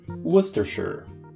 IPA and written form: ˈwʊs tərˌʃər (Worcestershire)